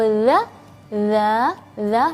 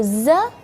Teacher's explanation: kalau dza dza dza lidahnya keluar sedikit kalau zza lidahnya di dalam